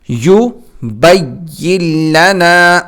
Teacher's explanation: اس یا کو ہم لام کے ساتھ ملائیں گے، یہ نون درمیان میں نہیں پڑھا جائے گا